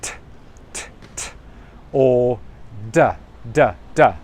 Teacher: they put their tongue behind the teeth. So instead of saying th, they'll say t, t, t, or d, d, d. So that's their tongue is behind the teeth, and they're going t, t, t, or d, d, d.